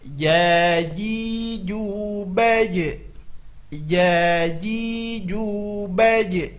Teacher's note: makhrajnya adalah tengah lidah ke tengah-tengah langit atas. Kebiasaan kita ujung lidah ke langit-langit atas salah. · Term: huruf jim